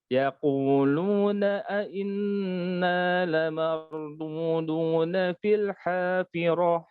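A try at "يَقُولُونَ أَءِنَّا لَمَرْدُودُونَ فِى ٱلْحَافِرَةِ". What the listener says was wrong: Jangan ngirung. Lamardudu. Dudu.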